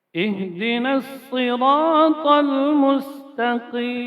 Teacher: Ha itu keluar dari pangkal tenggorokan.